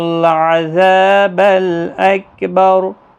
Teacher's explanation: اکبر را ساکن ہوگا تو پر پڑھا جائے گا اس زبر کی وجہ سے